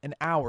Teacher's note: hour actually starts with an H, but it's silent. An hour, you don't pronounce the H, so it's still an. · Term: silent H